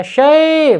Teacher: Sebelum wawu sukun berharokat fathah, kemudian ya sebelum ya sukun berharokat fathah, ini bacanya lin ya, harus halus, lembut, miring. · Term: bacaan lin